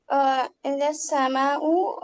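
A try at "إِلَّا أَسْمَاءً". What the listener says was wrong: اسماء، سما تو آسمان ہو جائے گا.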